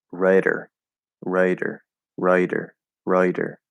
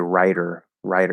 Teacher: Rider sounds more like a schwa into a short I, so rather than the I diphthong.